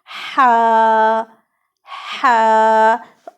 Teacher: ہا جو ہے وہ وسط حلق سے ادا ہوتا ہے، یعنی ہمارے حلق کے درمیانی حصے سے